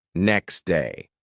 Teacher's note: instead of saying next day, natives often say next day, the T disappears. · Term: dropping sounds